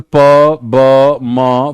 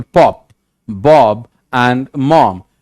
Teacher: Place of articulation, bilabial, involve both lips.